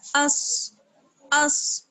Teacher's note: حمزہ کو ہم صاد سے ملائیں گے، اور صاد معلوم ہے آپ کو کہ حروف مستعلیہ میں سے ہے، یعنی پر پڑھا جاتا ہے